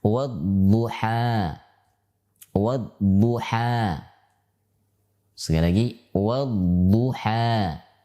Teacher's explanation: sifat istitalah, di mana sifat ini memanjang, ya, dari pangkal lidah sampai ujung lidah, ya. Dia akan terangkat menempel dengan bagian gigi geraham baik kiri maupun kanan, ya, elbo, dan itu hanya ada di dalam huruf dhad saja.